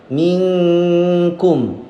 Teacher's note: Minkum, min ikhfa ab'ad. Jadi ketika mengikhfakannya didekatkan dengan makhrajnya kaf.